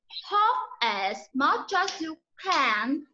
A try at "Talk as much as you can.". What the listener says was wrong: Hạ giọng xuống. Talk as much as you can. Talk as much as you can. As. Âm Z đó.